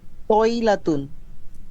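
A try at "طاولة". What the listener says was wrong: তউইলাতুন, তউইলাতুন। ওয়াও হবে। হ্যাঁ, তো হচ্ছে তউইলাতুন, একটি টেবিল। তউইলাতুন।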